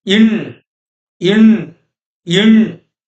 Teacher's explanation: produced by making a tight contact between the tip of the tongue and the upper roof. Tip of the tongue and the upper roof. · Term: sixth Tamil consonant phoneme